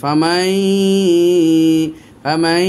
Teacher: ইয়া, মিম, নুন, চারটের মধ্যে একটা ইয়া, এই জন্য নুন সাকিনের উচ্চারণটা ইয়ার মধ্যে ঢুকাই দিলাম। ফামান ছিল, ওকে ঢুকাই দিলাম ইয়ার ভিতরে। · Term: গুন্না